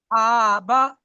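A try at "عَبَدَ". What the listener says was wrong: কেন জবরে টান হয় না? ঠিক আছে, আবা, দাল জবর দা। আবাদা।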